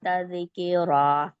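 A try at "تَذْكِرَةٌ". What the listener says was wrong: کلکلا نہیں کرنا. ذال پہ نا تھوڑی سی زبان کو رکھیں تھوڑی دیر.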